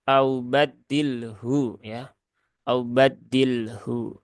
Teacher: pertemuan dua huruf sukun ketika wakof yaitu lam dan huruf ha, di mana lam dia ada di al-lisan sedangkan ha itu ada di al-halaq